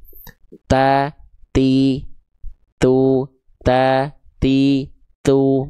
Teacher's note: tanpa sadar ujung lidahnya menjulur keluar mulut